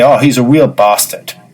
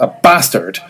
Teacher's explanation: if the vowel is short at the first, a bastard, then that's harsher